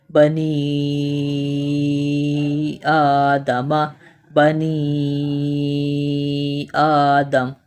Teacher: مد منفصل کی جو نشانی ہے یہ چھوٹی مد ہے اور اسے ہم 3 الف کی مقدار کھینچ کر پڑھتے ہیں